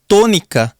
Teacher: a própria palavra tônica tem esta sílaba to, que nós pronunciamos com maior força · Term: sílaba tônica